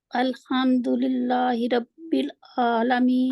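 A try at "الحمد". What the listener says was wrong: अल्हम्दु हा को पढ़ें। अल्हम्दु अपना मुंह खोले। हा पढ़े पहले। हा हा अपना मुंह नहीं अपना खोले है पूरा। अल्हम्दु अल्हम्दु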